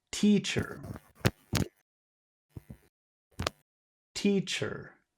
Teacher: we'll put the emphasis on the first syllable